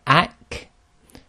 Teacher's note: when you stop on the kaf when it's sakin, you have a continuation of breath. So it's ak, very natural sound. · the kaf is pronounced slightly in front of the qaf, and it's very similar to the English letter K